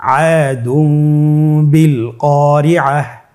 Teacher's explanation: তাহলে আমরা যেটি করব যে তানবিনকে মিম দ্বারা পরিবর্তন করে গুন্নার সহিত পড়ব।